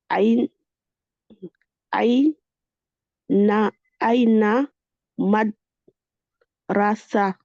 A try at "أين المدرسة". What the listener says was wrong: Alors, ouais, juste ici, j'ai pas entendu le lemme. Tu l'as dit?